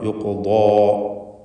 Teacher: ഖാഫിന് യുഖു എന്ന് ഖൽഖല സുഗ്റ നൽകി ശബ്ദം ഹറക്കത്ത് പോലെ ചലിപ്പിക്കണം. തഫ്ഖീം നൽകുകയും വേണം.